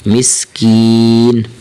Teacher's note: زر کی، مسکین، انذرنی، مسکینی، ولا یحظ علی طعام المسکین، مسکین، یہاں پر آخر میں نون کو ساکن کریں گے، نون کی زیر نہیں پڑھیں گے بلکہ نون ساکن پڑھا جائے گا